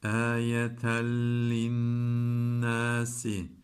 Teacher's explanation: Lam ra idgam bila gunne. Ne demekti idgam bila gunne? Gunnesiz katmak demekti.